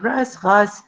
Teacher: the Old Arabic r has shifted to the velar fricative r in Qəltu